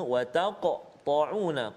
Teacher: qaf ada qalqalah dan tebal kat situ, huruf isti'la